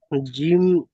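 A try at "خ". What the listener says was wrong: জিম নয়, খ। জিমের নিচেই নক্তা হয়, এটা তো খ উপরে নক্তা।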